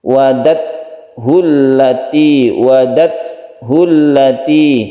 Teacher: Oleh karena itu kita ketika bersukun ta kita beri sedikit huruf s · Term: sifat hamas